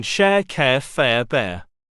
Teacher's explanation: this vowel starts with the vowel found in get and beg before gliding to the central schwar position